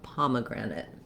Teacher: i'm holding the palm syllable the longest but i have a little maybe a little length because of my clear vowel on the grand syllable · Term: primary and secondary stress